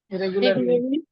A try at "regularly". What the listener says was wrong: Regular. Regular. Not ga. Ga, no. Ga. Regularly. Regularly. No, no. No ga. Not ga. Ga. Ga. Ga. Ga and ya. Ga and ya. Ga. Ga. Regularly. It is not ga. We do not have ga.